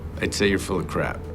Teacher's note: end the word by closing his mouth and getting ready to pronounce the P, but never releasing the air necessary to make that sound. So it becomes what's known as a stop P.